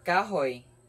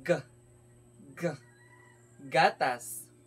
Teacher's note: bawat pagbikas natin sa mga letrang ito ay mapapansin natin na ang ibabaw ng ating punong dila ay lumalapit o dumidikit sa velum o sa malambot na bahagi ng ngala-ngala